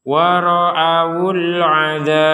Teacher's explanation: Maka kata al-'adzab ini huruf ba-nya kita pantulkan walaupun berharokat fathah, tapi karena kita berhenti maka huruf ba-nya dibaca sukun. Nah, ketika huruf ba dibaca sukun, maka ini dipantulkan. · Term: pantulan huruf ba